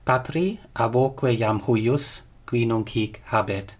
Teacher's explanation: But in this case, and you can't tell this just from looking at it, you have to scan it, we have a hiatus here. A hiatus basically means we have two vowels next to each other, they clash, but there's no elision here.